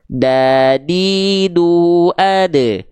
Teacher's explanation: Ujung lidah kita sentuhkan dengan pangkal gigi seri atas kita, teman-teman sekalian. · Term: huruf dal